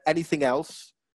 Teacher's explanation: that linked together didn't it anything else there was no pause between the two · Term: consonant vowel linking